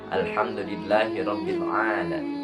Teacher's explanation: Di lafaz alham al tidak mantul atau tidak mempunyai qalqalah. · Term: lam sukun